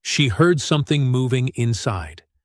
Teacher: The phrase heard something starts with an h sound that you exhale softly and moving puts stress on the first syllable move with a clear ooh vowel